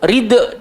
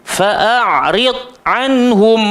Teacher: huruf dad tak termasuk huruf qalqalah, kena diam